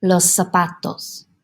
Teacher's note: ends with a vowel the letter n or the letter s the accent naturally goes on that second to last syllable so in this case that pa